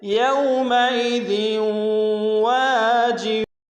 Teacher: واو کے اوپر ہم غنہ بھی کر رہے ہیں اور ادغام بھی کر رہے ہیں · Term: ادغام مع الغنہ